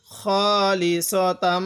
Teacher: এখানে নাকের বাসি দ্বারা গুণনা করব, কারণ মিমে নুনের তাজদিদ গুণনা করা ওয়াজিব। তো মিমের উপর তাজদিদ আছে, এজন্য আমরা এখানে গুণনা করব।